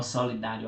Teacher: solidário aqui está com acento no dá, ele é uma paroxítona e terminado em ditongo